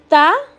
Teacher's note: जबान की नोक ऊपर के दांतों की जड़ को लगने से